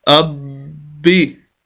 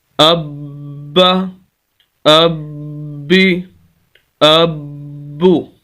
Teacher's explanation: آواز کو سخت کرنا ہے اور ہلکا سا روکنا ہے، اس لفظ کو سخت کرنا ہے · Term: شد